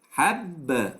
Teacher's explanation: But what I did to make qalqala is that there are two phases. The phase where I make a full articulation of ba, then a phase where I loosen, I untighten the articulation point. That's to say that the lips will be loosened, not stuck to completely.